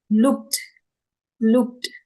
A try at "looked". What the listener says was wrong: it should be pronounced softly looked looked not looked not emphas do not pressurize or emphasize K A lot it should be very soft